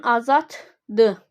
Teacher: Azaddır sözündə birinci D T olur.